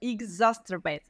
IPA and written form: ɪkˈzæsərˌbeɪt (exacerbate)